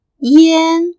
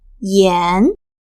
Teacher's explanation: she used yan with the flat tone, which means cigarettes, instead of yan with the rising tone, which means salt.